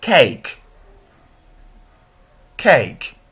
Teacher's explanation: So the tongue glides for the position of the second vowel sound E. A. We begin with monophthong E and end with monophthong E, as in cake. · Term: closing diphthong